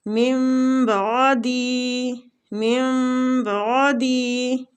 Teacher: ادھر نون ساکنہ کے بعد با آ رہا ہے، تو اس لیے ہم نون ساکنہ کو میم کے ساتھ بدل کے پڑھ رہے ہیں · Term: اقلاب